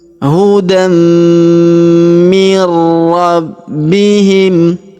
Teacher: hudam hudam mirabbihim huruf nun sukun perhatikan ada warna abu-abu ya huruf nun sukun bertemu huruf ro berharakat tasydid maka Nun sukunnya melebur masuk ke huruf ro yang berharakat tasydid